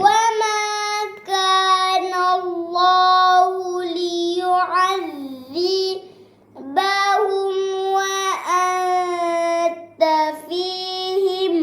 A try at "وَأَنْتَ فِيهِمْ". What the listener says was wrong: Jangan masuk ke hidung. Wa di mulut. Sebut wa jangan di hidung, di mulut.